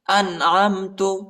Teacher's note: حمزہ کو نون کے ساتھ ملائیں گے اور نون کو جھٹکا نہیں دینا ہے، نون ساکنہ ہے